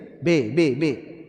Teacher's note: Ba dari dua bibir.